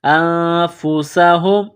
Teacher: نون ساکن کے بعد فا ہے، حروف اخفا ہے تو نون ساکن پر غنہ کریں گے